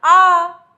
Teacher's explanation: तो जहां पर मुख पूरा खुल जाता है वह हो जाता है विवृत